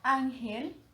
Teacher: gel sería la sílaba átona porque no se encuentra ahí el acento. Y an sería tónica porque se encuentra el acento. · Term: sílaba tónica